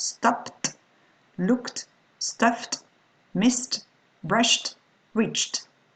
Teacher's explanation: For the endings in ED, it will be, the ED will be pronounced T after P, K, F, S, Sh, Ch.